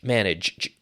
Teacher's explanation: So that G is almost like a CH, manage, but it's voiced